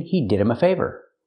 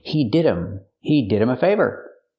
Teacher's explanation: Pronunciation, he did him a favor. We hear with him, the H is silent because it's not a stressed word